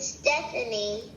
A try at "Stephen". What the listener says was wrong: Not Stephanie. Not Stephanie. There's no IE or Y at the end. It's just